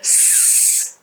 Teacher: You prolong it and you pronounce it like a soft or unvoiced consonant sound. Okay. S and you push a lot of air as well.